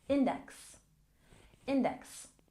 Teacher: And index, we stress the first syllable